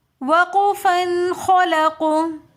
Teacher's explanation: وقفاً میں ہم خلقو اس وجہ سے پڑھیں گے کیونکہ قاف حروف قلقلہ میں سے ساکن حالت میں آ جائے گا، تو وقف کی حالت میں ہم یہاں پر خلقو قلقلہ کریں گے